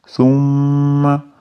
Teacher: G'unali tashdidli mim deganim. Tasdidli mim g'unna qilamiz